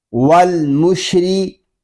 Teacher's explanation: را زیر ری، والمشری. را باریک ہے کیونکہ را کے نیچے زیر آ رہا ہے